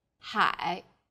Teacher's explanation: syllable is made of an initial and a final i and a third falling then rising tone